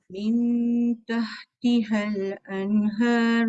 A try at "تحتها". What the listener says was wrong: tahtihal. Dia tak panjang.